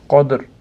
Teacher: Ha, be da qadr da qalqala bor, deydi. Ozgina qalqalasini berib, keyin to'xtaymiz.